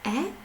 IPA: е